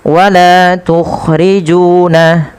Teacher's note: Panjangkan huruf la, ju sepanjang 2 harakat karena keduanya ada bacaan mad tabi'i dan harus sama. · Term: mad thabi'i